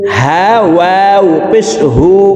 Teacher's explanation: এই হার উচ্চারণ হলকের শুরু থেকে পড়ব